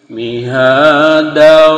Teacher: Jadi idgham melebur dengan huruf waw tanpa dengung.